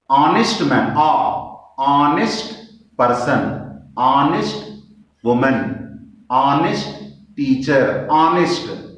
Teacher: There is no ha sound. There is no H sound. · Here H sound you cannot hear. It does not come. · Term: H is silent